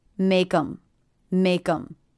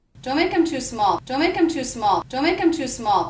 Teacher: I reduced the word them to the schwa M sound? Because in this pronunciation, the word them begins with a vowel, and the word before, make, ends with a K, I'm going to make sure that those two words link and feel like one unit.